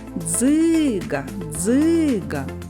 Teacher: наголос падає на звук и